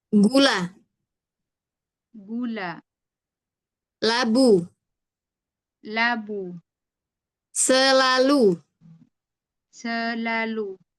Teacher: Nempelnya itu di gusi. Gusinya yang dekat dengan gigi atas. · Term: huruf lamnya